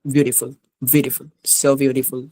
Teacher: টি অনেক সময় ডির মতো উচ্চারণ হয়